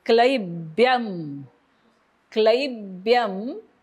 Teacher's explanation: क्ल वरती आघात ब्यच्या अनुस्वाराचा हलंत म कारण पुढे म आहे मा स्मगम मा वरती आघात क्लब्यम मामगम म आता बघा विसर्गाच्या